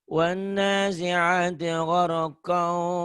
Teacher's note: Ini ketemu wau tuh. Idgham bigunnah. Dimasukkan, dileburkan, disertai dengan dengung. Karena patah tain ini ketemu wau.